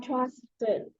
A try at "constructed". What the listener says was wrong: there's an S, constructed.